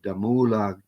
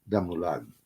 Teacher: the accent falls on the final syllable